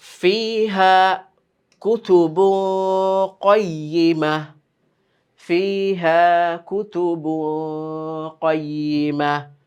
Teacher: আমরা নাকে ধরলাম কেন? তানবিনের পরে কফ, যেটা হচ্ছে নুন সাকিনের ইকফা।